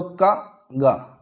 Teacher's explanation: सबसे कम वायु जो कि का और गा के उच्चारण में निकलती है